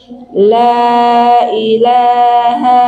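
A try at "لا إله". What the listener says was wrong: Panjang. La panjang.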